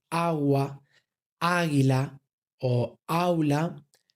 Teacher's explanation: en palabras como agua, águila o aula, la sílaba tónica es la A. Es donde recae la fuerza de nuestra acentuación.